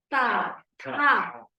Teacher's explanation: we have to put the tongue between our teeth.